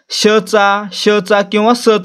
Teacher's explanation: उच्चार करताना काय होतं तोंडामध्ये घर्षण होत आणि उष्णता निर्माण होते म्हणून यांना काय म्हणतो आपण उष्मे असं